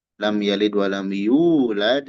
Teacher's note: Yulad itu mad thobi'i dua harakat jangan lebih ya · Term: mad tabi'i